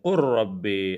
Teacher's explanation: لام کی آواز بالکل باقی نہیں رہتی. ہم قر رب جب پڑھیں گے تو صرف را جو ہے زائل ہوگا، لام کی آواز باقی نہیں رہے گی. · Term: ادغام میں متقاربین تام